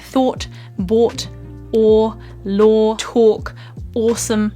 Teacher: my lips are quite closed and round, but the back of my mouth is still quite relaxed. Or, and there's a slight curling and lifting of my tongue as well. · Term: curled round O sound